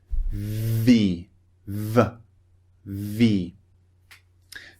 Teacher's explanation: you're using your vocal chords to produce the sound as well as pushing air out of your mouth through your teeth and bottom lip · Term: the v sound